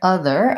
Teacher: And I just simply need to have my tongue between my teeth, my voice is on, and the sound should continue. Many people will have a tendency to either put the tongue too far behind the teeth or to push against the teeth. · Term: voiced TH sound